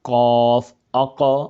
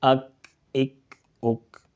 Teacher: قرآن پاک کی تلاوت کے وقت قاف جس کے اوپر دو نقطے ہوں وہ اسے موٹا قاف کہا جاتا ہے، حروف مستعلیہ کے اندر آتا ہے، اور دوسرا کاف باریک ہے، اس کی آواز باریک نکلے گی۔ قاف زبان کی جڑ اور تالو کے نرم حصے سے ادا ہوتا ہے، قاف اق، اور کاف زبان کی جڑ اور تالو کے سخت حصے سے ادا ہوتا ہے